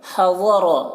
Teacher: ضاد کو پر پڑھنا ہے، حروف مستعلیہ میں سے ہے یہ، را کو پر پڑھنا ہے